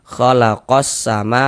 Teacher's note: Nah, halif lam syamsiah itu disebut juga dengan idgham syamsiyah. Karena cara membaca huruf lamnya ini kan ya tidak dibaca nih langsung masuk ke huruf sin dari qo langsung ke sin khalaqos sama begitu.